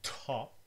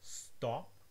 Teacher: The first one is top, with an aspirated T and then a P. The second one is stop, with just a regular T and no aspiration.